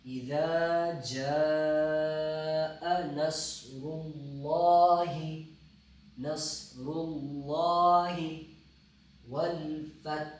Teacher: اذا جا کو لمبا 5 الف کی مقدار